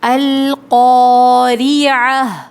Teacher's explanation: یہ گول تا جب کسی لفظ آیت کے آخر میں آتی ہے تو اس کو ہا پڑھتے ہیں